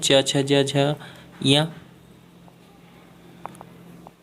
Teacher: हमको पता है च वर्ग तालु से उच्चारित किया जाता है,